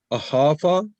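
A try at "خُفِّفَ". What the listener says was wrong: It is not khafa. You see, how many fas are there? 3. In khafa, there are 3. It is only just one fa there, no khafa. So it is khaffafa, like allama.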